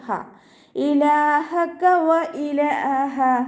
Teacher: ഹ മഖ്റജ് വരുന്നത് നമ്മുടെ അക്സൽ ഹൽക്കാണ്, തൊണ്ടയുടെ അവസാന ഭാഗം. സൗണ്ടിനെ ക്ലിയർ ആക്കിയിട്ട് ഉച്ചരിക്കുക കേട്ടോ.